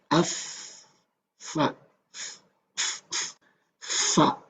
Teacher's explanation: Kita tentukan makhraj fa di mana? Bibir bagian dalam bertemu dengan ujung gigi seri yang atas.